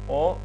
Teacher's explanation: И омега, знак за о, но меѓутоа долго и отворено о.